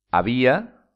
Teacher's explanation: había tiene la intensidad en la vocal i